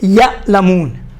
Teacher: سختی نہیں ہے, نرمی سے روان ہے اور بدون جھٹکے کے ادا ہوتا ہے. یہاں جھٹکا نہیں ہے بلکہ آواز وہاں سے نکلتی ہے تو گلے کے بیچ میں آ کر کیا ہوتی ہے؟ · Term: آئین